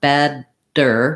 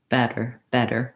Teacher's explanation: a d but i don't build up a lot of pressure not bad dir with a strong d but better better with one little flap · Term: flap t, flap T